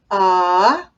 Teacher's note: ah, which is a mid-jaw vowel and a neutral vowel.